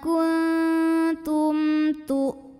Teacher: Tum ada izhar syafawi karena mim sukun menghadapi huruf yang bukan mim, bukan ta, bukan ba ya. Ini hurufnya ta, maka mim sukun dibaca jelas.